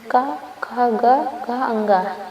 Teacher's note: इस वर्ग की सभी ध्वनियों का उच्चारण कंठ से होता है।